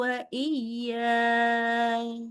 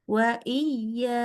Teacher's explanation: Ya, jadi panjang iyanya 4 harokat.